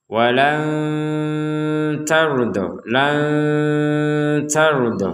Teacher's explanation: Jadi ada nun yang tidak terbaca dengan jelas karena bertemu dengan huruf ta. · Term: dibaca dengan samar